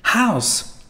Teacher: when we have for example this English word house here you can hear the aspirate H